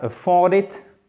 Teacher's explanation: sachez que l'accent tonique se fait sur la deuxième partie